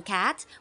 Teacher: we block the air flow at the back of the mouth using the tongue then release it abruptly